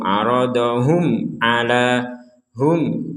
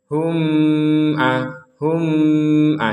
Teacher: Mim sukun bertemu ain, kita baca jelas. Tidak boleh dengung.